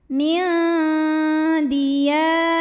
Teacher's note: ini dengungnya sedikit karena dal makhrajnya masih dekat dengan nun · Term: ikhfa aqrab